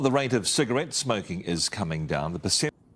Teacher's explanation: she's got like a sexy breathy voice